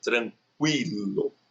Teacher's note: Agora, quando nós temos duas semivogais, que é o caso de tranquilo, aí você vai ter que levar em consideração o jeito que você fala. Então, note que você fala o U de uma maneira menos intensa e o I de uma maneira mais intensa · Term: ditongo crescente